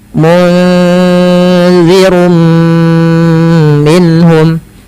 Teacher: Maka pada dasarnya tanwin itu adalah nun yang dibunyikan tapi tidak ditulis. Kemudian maka masukkan ke huruf mim. Munzirum minhum, dan ditahan 2 harokat. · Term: idgham bi gunnah